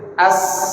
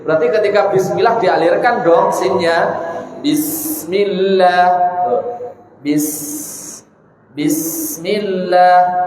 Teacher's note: Kalau secara alamiahnya kita mensukunkan sin adalah lunak mengalir. As. Gak bisa sin itu diucapkan dengan cepat.